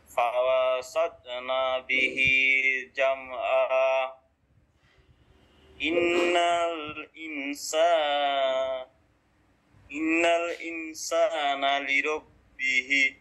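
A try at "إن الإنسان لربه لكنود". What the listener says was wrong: এটা একটু লম্বা করেন একালিফ লিরাব্বিহি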